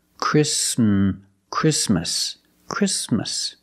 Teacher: The T is between consonants, so it is silent. Link the sound s with the m.